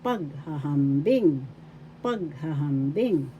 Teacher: First syllable pag, second syllable ha, third syllable ham, fourth syllable bing. The first and the fourth has the accent.